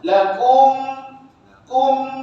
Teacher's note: kena rapat k bibir kita atas dan bawah tu lakum kum dia naik sengau sikit dekat hidung kita ni m sebab mim ni dengan Nun dia ada senguh di hidung · Jelas di mulut, maknanya kita kena rapat, kena ketuk dua bibir kita atas dan bawah tu. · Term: izhar syafawi